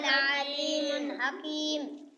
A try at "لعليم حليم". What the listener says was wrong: देखो और से लअलीम हलीम हर जगह हकीम नहीं